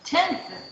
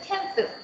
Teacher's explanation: So the word tenth can be tenth without dentalized sound and tenth with dentalized sound, without any change in meaning.